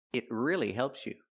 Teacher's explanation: We hear the pronunciation it. Use a stop T.